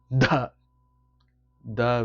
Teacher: the the with a strong gush of breath